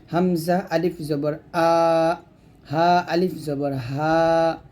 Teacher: ক এরকম তারপর সর্বশেষ ছয়টি হরফ আমরা গলা থেকে উচ্চারণ করব হামজা এবং হা গলার শুরু থেকে উচ্চারণ হবে